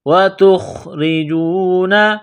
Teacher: تا کو خا کے ساتھ ملانا ہے، خا کو موٹا کرنا ہے، را کو باریک کرنا ہے